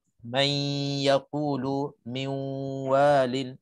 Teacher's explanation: kena dengung nun ke dalam huruf-huruf idgham ma'al gunnah